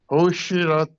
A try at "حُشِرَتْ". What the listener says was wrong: نہیں شے نہیں کہنا، ہوشی ہوشی روت. وَإِذَا الْوُحُوشُ حُشِرَتْ.